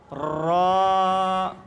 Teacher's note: র উচ্চারণ করার সময় সর্বপ্রথম কি হবে, জিহ্বার আগাটা একটু কাঁপবে, উপরে বাড়ি খাবে।